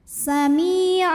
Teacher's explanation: karena ada Ya Sukun didahului kasrah maka huruf mim panjang dua harakat